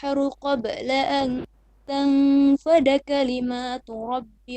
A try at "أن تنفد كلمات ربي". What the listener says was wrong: كلمات ربي, long vowel. Go from, you can go from أن تنفد كلمات ربي.